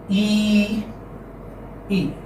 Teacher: E is a front close unrounded vowel. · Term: long E